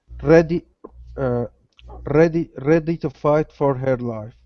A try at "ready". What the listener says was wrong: All right, nice vowel sound. Let's watch that R at the beginning. Instead of ready, it's ready.